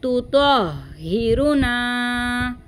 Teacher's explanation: तो को हा के साथ मिलाएंगे, तो हा ज़बर तो, ठीक है, इस तरह से भारी आवाज़ आएगी। तो को हा से मिलाएंगे तो भी भारी आवाज़ आएगी।